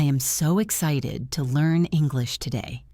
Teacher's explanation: Try to copy the way my voice went up at the word excited. Try to copy the speed.